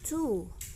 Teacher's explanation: Ketika kita melafalkan bunyi U pada kata to, maka our lips are rounded atau mencucu ya.